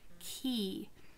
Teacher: i want you to think about where your tongue is key your tongue actually comes forward a little bit because of the e sound key if you do your tongue when you produce the is